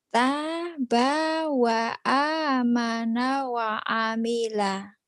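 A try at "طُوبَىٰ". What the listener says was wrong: banyak masih panjang, banyak kurangin dikit. Tabawa, cuman lagunya aja Ibu masih kagok.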